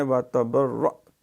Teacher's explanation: یہاں جھٹکے کے ساتھ حمزہ جو ہے سختی سے ادا ہوگا کیونکہ یہ ساکن ہے